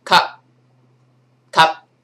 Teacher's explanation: you can sense that the P is coming, but it's not pronounced quite yet